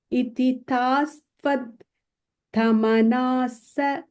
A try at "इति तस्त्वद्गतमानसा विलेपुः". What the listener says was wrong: I think you're breaking it wrong. That's why it's not running. Iti tas tvad gata manasa vilepuhu.